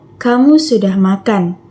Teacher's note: Nada datar yang menunjukkan pernyataan